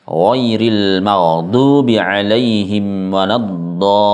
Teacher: harus dinampakkan tasydid atau nabernya dengan menekan huruf lamnya serta diangkat sedikit suaranya.